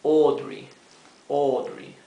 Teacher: Fíjense esto, la A con la U tiene un sonido propio. Esta combinación de letras A y U se pronuncia O, una O profunda